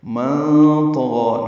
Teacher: نون ساکن کے بعد طا آنے کی وجہ سے اخفا ہے، نون کی آواز چھپائیں گے ، طا پر پڑھیں گے، غین بھی پر پڑھنا ہے اور